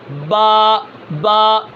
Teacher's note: با کہاں سے ادا ہو رہی ہے؟ دونوں ہونٹوں کو ملانے سے، اور وہ حصہ جو تری والا ہے اندر والا